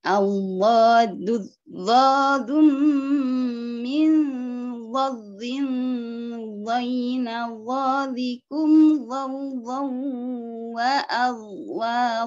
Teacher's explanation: Allah ada zidda di situ, jadi al bertemu dengan dzat itu idgham syamsiyah ya. Jadi alnya tidak kelihatan, langsung dimasukkan ke dzatnya.